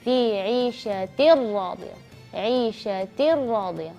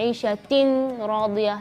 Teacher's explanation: Jadi maka bacanya tanwin yang setelahnya huruf ra, maka bacanya idgham bila gunnah. Tetap ada idgham tapi tanpa gunnah.